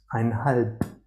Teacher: the B at the end turns into P